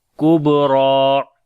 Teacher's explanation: اوپر توسط کریں گے، نار کبرا، کاف کو باریک پڑھیں گے، با کے اوپر قلقلہ کریں گے، آواز کے اوپر آواز میں جنبش پیدا ہوگی ، را کو موٹا پڑھیں گے اور لمبا بھی کریں گے،